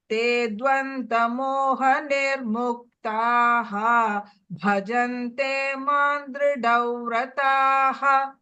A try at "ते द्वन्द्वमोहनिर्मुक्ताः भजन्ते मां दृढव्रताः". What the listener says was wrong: I heard a dvanta. It is dvantva. Dvantva.